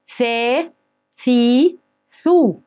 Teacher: لأن الثاء من الحروف اللثوية اللي لازم تطلع فيها طرف لسانك وانت بتنطق.